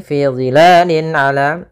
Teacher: ain termasuk huruf izhar dan huruf halq, yaitu huruf yang keluar dari tenggorokan, maka harus jelas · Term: izhar halqi